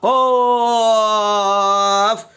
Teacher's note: 4 নম্বর মাখরাজ জিহ্বার গোড়া তার বরাবর উপরের তালুর সঙ্গে লাগাইয়া 2 নক্তাওয়ালা কফ